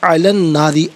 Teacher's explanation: بقبسن او، اجیدو علی الناری، علا پڑھیں گے تو لام پر کھڑا زبر ہوگا، ملا کر پڑھیں گے تو لام پر زبر ہوگا، اسے الناری کی نون کے ساتھ ملائیں گے، درمیان میں سے الف یعنی حمزہ کو حذف کیا جائے گا اور یہاں نون کا ساؤنڈ ادا کیا جائے گا